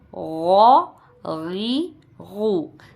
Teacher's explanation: غین زبر غو، غین زیر غی، غین پیش غو، غو غی غو. تینوں آوازیں موٹی نکلیں گی، زبر کے ساتھ بھی، زیر کے ساتھ بھی اور پیش کے ساتھ بھی